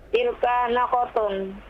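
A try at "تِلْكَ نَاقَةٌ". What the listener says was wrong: Panjang pendeknya tilka.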